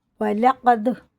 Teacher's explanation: دال میں قلقلہ ہے اور قاف بڑا ہے